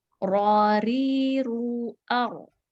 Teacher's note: apabila ro-nya bertemu dengan didahulukan fathah, kemudian juga didahulukan dhammah, dia tebal ya, dengan mengangkat pangkal lidah.